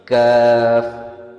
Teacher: زبان کے مڈل حصے کو ہارڈ پیلیٹ کے ساتھ لگائیں. اس کا ساؤنڈ تب نکلتا ہے جب زبان کے مڈل پارٹ کو ہارڈ پیلیٹ کے ساتھ لگایا جائے اور ہوا کو بلاک کر کے ریلیز کیا جائے